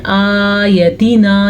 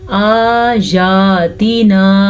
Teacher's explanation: दोनों खड़ी ज़बर हैं तो दोनों को हम खींच के पढ़ेंगे